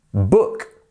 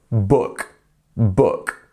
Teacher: the two o's together quite often this makes an ooh sound right but in this case it's making a uh uh it's quite a quick one uh book book repeat after